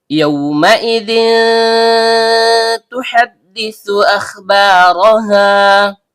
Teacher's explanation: Ya, tengah lidah naik memantul ke langit-langit. Karena ya berharakat fathah diikuti wau sukun yang keluar dari bibir, maka terjadi bacaan lin. · Karena dalalnya berharakat tanwin bertemu dengan huruf ta yang keluar dari ujung lidah bertemu dengan pangkal gigi seri atas, maka terjadi hukum bacaan ikhfa hakiki aqrab atau ikhfa hakiki a'la. Dibaca samar disertai dengung